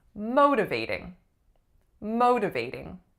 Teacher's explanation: The majority of my clients do not put enough stress on this first syllable. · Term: primary stress